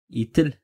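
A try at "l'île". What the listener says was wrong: Ну, где тут Т вообще нету? И аксан циркумфлекс. Лиль.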